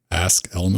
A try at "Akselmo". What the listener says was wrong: Akselmo. That's AKS, not ASK.